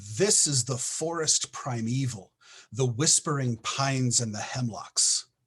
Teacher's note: the dactyl is a like i said a stressed syllable unstressed unstressed